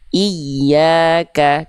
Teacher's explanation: huruf ya itu si makhrajnya dari tengah lidah diarahkan ke langit-langit. Nah, sekarang karena dia naber, dikuatkan lagi, naikin lagi ke atas.